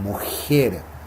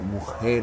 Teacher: Los chilenos dicen mujer, tirando la lengua hacia el paladar en vez de pronunciar mujer atrás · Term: la J chilena